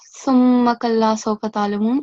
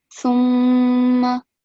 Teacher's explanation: You have to again pronounce nasal sound, but also it should be for at least 2 seconds counts or beats. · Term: mim mushaddad